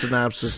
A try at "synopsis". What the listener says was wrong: It sounds like you're saying snap sis. But that's how I'm going to pronounce Yeah, you're just too fast.